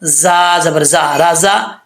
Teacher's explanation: آگے زا میں سیٹی آئے گی، سیٹی کے ساتھ پڑھا جائے گا